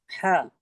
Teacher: हा का मखरज। जी, हलक के दरमियानी हिस्से से अदा होता है